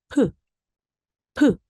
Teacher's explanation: P는 윗입술과 아랫입술이 네, 닿았다 떨어지면서 나는 소리죠. 프, 프 이렇습니다.